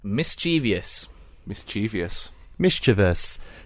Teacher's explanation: So I put stress on the first syllable